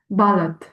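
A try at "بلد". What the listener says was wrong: balad, exactly, short.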